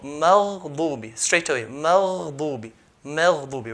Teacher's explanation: between ghain and the next letter, there's no gap. So Maghdubi, straight away, Maghdubi, Maghdubi. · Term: Ar-Rakhawa